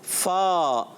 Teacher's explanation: ہمارے اوپر کے دانتوں کے کنارے جب نیچے والے ہونٹ کے تر حصے سے لگتے ہیں تو ادا ہوتا ہے فا